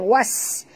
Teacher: bunyikan safir ya, pada sin. Was, desir ya, angin.